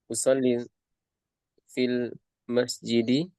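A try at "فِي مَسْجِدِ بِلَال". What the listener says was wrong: Fi masjidi, nggak boleh ada alif lam ya. Fi masjidi. Nah, di sini Bilal itu dia tidak mamnun min as-sarf ya. tidak mamnun min as-sarf. Bilalin. Nah, ya masjidi Bilalin. Dia bisa kasroh ya.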